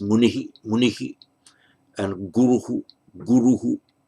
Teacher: Nominative singular, munih, munihi, munihi, and that shadow vowel reflects the vowel before the visarga. So in pause, in isolation, end of a sentence, it would tend to be pronounced munihi, munihi, and guruhu, guruhu.